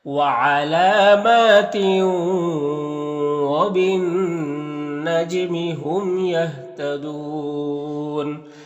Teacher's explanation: نون میں غنہ ہوگا، یعنی نون کی آواز کو ناک میں گنگنا کر پڑھیں گے ایک الف کی مقدار، اور یہ نون مشدد ہے تو پیچھے والے حرف با سے مل کر پڑھا جائے گا، یہ الف اور یہ لام دونوں کو نہیں پڑھیں گے۔ · اور جیم حروف قلقلہ میں سے ہے اور جیم کے اوپر جزم ہے تو جیم میں قلقلہ ہوگا، یعنی جیم کو ادا کرتے وقت جیم کی آواز اپنے مخرج سے ٹکر کھا کر الگ ہو جائے گی۔ میم میں اظہار شفوی ہوگا، تہتدون میں بھی وقف کریں گے تو مد عارض وقفی ہوگا، تو اس طرح سے پڑھیں گے۔